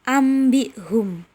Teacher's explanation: nun mati yang harusnya dibaca nun berubah menjadi mim · mengganti huruf nun mati atau tanwin menjadi huruf mim mati disertai dengung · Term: iqlab